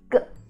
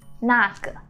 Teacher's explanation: So you see 个 has nothing above. There's no tone, right? It's called neutral tone. You go really light.